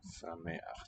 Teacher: the lowering of the vowel is probably the effect of the old emphatic ch